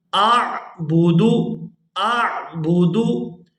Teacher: یا حمزہ جو ہے وہ عین کے ساتھ مل رہا ہے، تو ہم نے حمزہ کو عین کے ساتھ جب ملانا ہے تو آواز جو ہے حلق سے ادا ہوگی